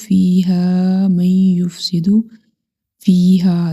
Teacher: دونوں فیہا میں یا مدہ اور الف مدہ دونوں کو ہم 1 سیکنڈ تک لمبا کریں گے